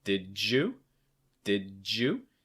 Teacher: Notice that j sound between the D and the Y.